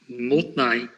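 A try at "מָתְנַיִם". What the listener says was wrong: Motnaim. Yes,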